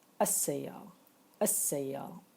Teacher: Al-ta'rif means the determined, or the article da. So we pronounce as-sayyara without saying the letter L here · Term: lam shamsiyya